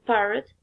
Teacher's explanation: The articulators involve lower lip and upper lip. The articulation place is bilabial, and articulation mode is plosive.